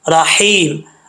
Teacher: زر را پر پڑھا جائے گا یعنی موٹا پڑھا جائے گا، آگے ہا جو ہے یہ ہا بریک ہے، اس کا تعلق حلق سے ہے، سینے کی طرف نہیں ہے